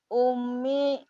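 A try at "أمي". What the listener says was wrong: Pelafalannya diperbaiki, bukan umi. ummi gitu. Karena kan iya di situ seperti ismi Robbi gitu.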